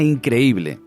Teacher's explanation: cuando la pronuncias realizas una pequeña pausa entre las 2 vocales que están juntas. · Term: hiato